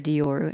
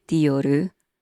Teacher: In Japan, we say Dioru with a ru vowel sound at the end, so it becomes Dioru.